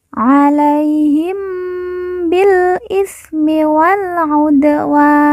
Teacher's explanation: Dal sukun atau Dal mati kita baca pantul karena merupakan huruf Qalqalah · wa kita baca panjang dua empat atau enam harakat karena di depannya terdapat huruf alif sebelum huruf pemberhentian